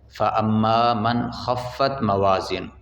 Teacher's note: غنہ نہیں ہوگا کیونکہ آگے حروف حلقی میں سے خا آ گیا ہے